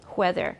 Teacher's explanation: We can just add a little circle under the W, and that means voiceless. So it goes from voiced w to voiceless hu.